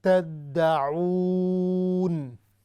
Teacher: یہ جو تدعون ہے نا اس کو ہم نے ناک سے نہیں پڑھنا. تدعون کی بجائے تدعون.